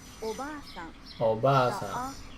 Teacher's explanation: The a in ba is held for 2 claps. Oba-san. Japanese learners often shorten the long vowel in ba and say Oba-san, meaning aunt, not grandmother. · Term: long vowels